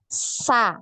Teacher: dua gigi seri yang bawah ya nempel di situ kemudian ya suara itu keluar melalui celah-celah diantara gigi seri atas dan gigi seri yang bawah jadi lidah ya ujung lidah ini menempel di bagian belakang gigi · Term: huruf Sin